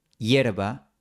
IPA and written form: 'jeɾ.βa (hierba)